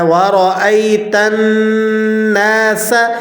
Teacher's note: سین باریک حروفوں میں سے ہے اور اسی طرح سین میں سیٹی بھی نکلتی ہے